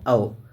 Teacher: कंठोष्ठ दीर्घ स्वर का उदाहरण है तो औ है, कौन सा है?